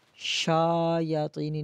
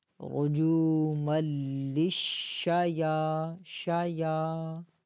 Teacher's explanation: یا کو ایک الف کی مقدار کھینچیں گے